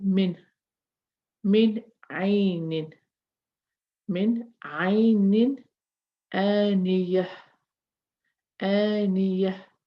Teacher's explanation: I'm pronouncing the noon because of the ain, and I'm pronouncing this noon because of the hamza.